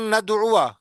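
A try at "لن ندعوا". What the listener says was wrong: उआ नहीं पढ़ेंगे, लन नदुआ, लन नदुआ।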